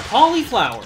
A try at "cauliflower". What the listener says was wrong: Cauliflower. You're really enunciating on the I. Cauliflower. Because that's wrong.